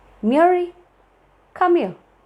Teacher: So there is a pause between Mary and come here.